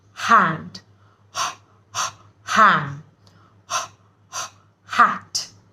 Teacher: h sound of etches see we are not trying to say her or ha you're just saying like you're checking your breath